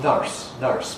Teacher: In Scottish English, we get nurse, which is just like cup you drink from, strut, plus an R, nurse, nurse, which is what the spelling suggests, nurse. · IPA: /nʌrs/